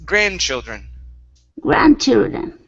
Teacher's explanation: our stress is at the very beginning